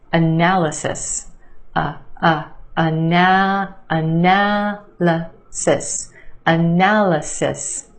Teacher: emphasis on the second syllable the a sound analysis and yes there are two schwas in this word the first syllable and the third